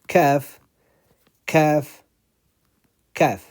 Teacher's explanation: Kaf, this easy one, it's in English too, is like K, kaf. So it's the middle of the tongue touching the roof of the tongue.